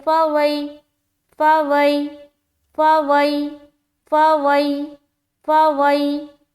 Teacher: زبر ہے، یا ساکن سے پہلے زبر ہے تو اب یائلین کا قاعدہ بن گیا، اور یائلین کو ہم نرمی کے ساتھ جلد ادا کرتے ہیں، یعنی کہ اس میں سختی بھی نہیں کرنی، اس میں دیر بھی نہیں لگانا، اور اس میں مجہول بھی نہیں کرنا، بلکہ معروف آواز نکالتے ہوئے اس کو ادا کریں گے، جیسے کہ فوئی فوئی فوئی فوئی فوئی، اس طریقے سے۔